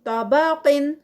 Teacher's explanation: صرف طا ہیوی قاف ہیوی ہوگا لیکن اس پر قلقلہ نہیں ہوگا، لیکن جب ہم اس کو سٹاپ کریں گے طبق، تو پھر اس پر اینڈ پہ آواز پلٹے گی قاف پہ، تو اس کا قلقلہ ادا ہوگا.